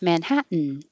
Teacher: like you're going to say hat but don't release the t hold it there which is the same as the in position manhat make the